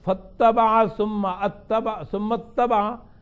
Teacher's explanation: حمزہ وصل ہے وہ گر جاتا ہے، اور اتبع حمزہ قطعی ہے.